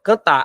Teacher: a sílaba tônica é a última se a sílaba tônica é a última quer dizer que a palavra cantar ela é oxítona